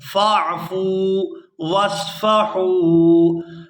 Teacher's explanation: یہاں فا کو واو ساکن کے ساتھ ملائیں گے تو کھینچ کر ادا کریں گے کیونکہ یہ واو مدہ ہے ، واو ساکن ہو اور اس سے پہلے پیش ہو حرف